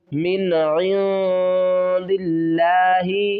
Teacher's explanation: نون ساکن کے بعد حروف حلقی میں سے عین آ رہا ہے، تو یہاں پر ہم نون کی آواز کو ظاہر کر کے پڑھیں گے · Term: اظہار